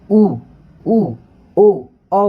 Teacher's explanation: जैसे आप ऊ ऊ ओ बोलोगे तो आपके होठ पूरे गोल हो जाते हैं। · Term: वृत्ताकार